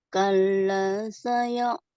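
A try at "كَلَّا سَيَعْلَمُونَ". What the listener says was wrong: Kalau saya alamunya kurang melayang ya. Kalla saya'lamun. Agak setengah ya.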